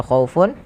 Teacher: tanwin un bertemu dengan ain yang di mana ain termasuk huruf izhar maka suaranya harus dijelaskan. Tidak boleh ada penahanan di dalamnya. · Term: izhar halqi